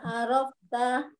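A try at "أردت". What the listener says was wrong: Arabta. Arabta. Nggak ada fa-nya, Bu. Nggak ada fa-nya. Nggak ada fa-nya, Bu. Nggak ada fa-nya. Ada dal.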